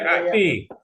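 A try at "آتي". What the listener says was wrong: Ati, panjang A-nya ya.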